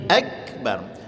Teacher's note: Contohnya Allahu akbar, kaf itu huruf syiddah, maka dia tekan ak, bukan Allahu akbar, tidak, tapi akbar.